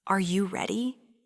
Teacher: when we ask a straightforward yes or no question in English, our voice almost always rises at the end. This is our signal to the listener that we're expecting a yes or no answer.